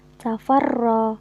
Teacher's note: ro yang dibaca tafkhim atau tebal karena ro yang berharokat fathah